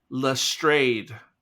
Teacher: the first syllable has an E like let, so it's le, and then it's a long A sound as in trade, so it's Lestrade.